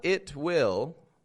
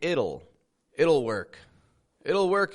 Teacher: we make that t into a flap T